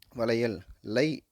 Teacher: இதுவே பாருங்கள், வளையல், லை, அதாவது இல்லு கூட்டல் ஐ, இது சேர்த்தோம்னா தான் லை கிடைக்கும். எனவே சொல்லுக்கு இடையில் வந்துள்ள ஐகாரமானது என்னவாகும்? இங்கே ஒரு மாத்திரையாக குறைந்து ஒலிக்க ஆரம்பித்துவிடும். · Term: ஐகார குறுக்கம்